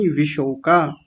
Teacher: श को हल्का रखिए। इतना जीभ को ऊपर नहीं ले जाना मूर्धा में। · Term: तालव्य शकार